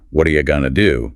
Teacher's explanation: The stress still falls on what and do or perhaps on going to. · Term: stress pattern